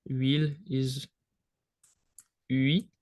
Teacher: in French the H is completely silent. It doesn't make any sound whatsoever. So it's the real first sound of huile is ui.